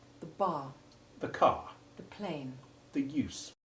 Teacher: the sound of the definite article is short e2 the ivy sound and the following word begins with a consonant